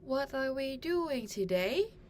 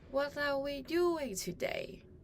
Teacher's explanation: A WH question should end with a falling tone. The word today should have a falling tone.